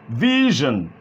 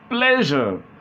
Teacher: The next one is zh, which is voiced. The same pattern of articulation. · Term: zh sound